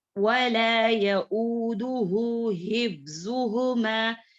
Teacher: یہاں پر ہا الٹا پیش کے ساتھ ہے. اس کو 2 مقدار میں ہی پڑھیں گے